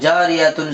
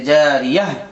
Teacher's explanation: گول تا پر ٹھہرنا ہو تو وہ ہائے ساکنہ بن جاتی ہے